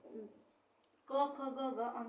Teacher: क वर्ग में आपका क ख ग ग अंग आ जाएगा तो उसको कंठ से उच्चारित करेंगे